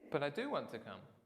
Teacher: so here emphasised do